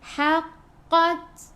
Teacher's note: ta sifat hurufnya hamas kena ada sedikit sahaja angin